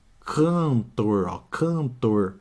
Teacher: Um dígrafo vocálico. Ó o N nasalizando o som do A